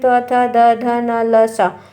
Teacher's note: त थ द ध न ल स ये दंत से उच्चारित होते हैं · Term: दंत वर्ण